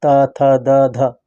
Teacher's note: त थ द ध दंत व्यंजन है